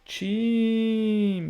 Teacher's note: A antepenúltima sílaba, a sílaba ti, é a sílaba tônica. Ou seja, proparoxítona.